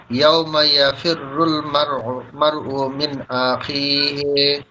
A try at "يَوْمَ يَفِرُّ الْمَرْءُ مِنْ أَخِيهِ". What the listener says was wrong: আখি একটু আতা টান হয়ে গেল, আখি হ্যাঁ।